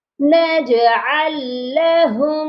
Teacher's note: ہم نے ساکن لام کو چھوڑ دینا ہے اور عین کو لام مشدد کے ساتھ سختی سے جوائنٹ کرنا ہے، نجعل لہم۔